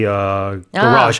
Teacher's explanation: the stress is on the second syllable for American English.